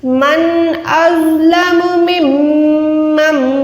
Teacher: जब भी मीम शद के साथ आएगी या नून शद के साथ आएगा, दोनों को हर हाल में हमने नाक से अदा करना है, यानी मिम में नहीं पढ़ेंगे, प्रॉपर मीम शद पे गुन्ना करें।